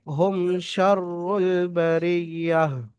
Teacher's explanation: আর যেহেতু এখানে ওয়াক করছেন, থামছেন, থামা হচ্ছে, সেই জন্য করে তায়ের উপরে সাকিন করে, গোল তা রয়েছে, সাকিন করে হা সাকিনের মতো পড়তে হবে।